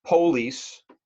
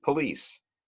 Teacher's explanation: in the north in general we tend to put the emphasis the accent on a later syllable where in the south United States or in England they tend to put the accent on the first syllable